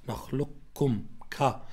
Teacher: الأصل الكاف مرققة ولكن هنا تأخذ صفة الاستعلاء اللي هي صفة الاستعلاء من الحرف الذي قبلها وهو القاف، حتى يكون هذا الإدغام متجانس، ما يكون بارك الله فيكم مثل المتماثل، والله تعالى أعلى وأعلم.